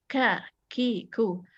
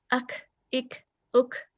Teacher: Nah, karena ka ini rongga tenggorokan lebih terbuka, jadi dia ada hembusan nafas. Sifatnya namanya hamas.